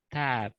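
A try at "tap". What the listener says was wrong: Kalau kamu nggak ada p-nya itu di belakang, itu belum. Coba sekali lagi.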